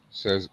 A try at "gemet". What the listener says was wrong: No, where you get sa from? There's no sa there.